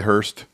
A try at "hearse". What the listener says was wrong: Don't say Hearst. 2, it's pronounced hearse, not Hearst. There ain't no T in